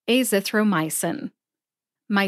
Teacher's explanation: my gets the most emphasis